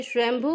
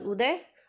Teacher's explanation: भू में दीर्घ उ है और उदय में ह्रस्व उ है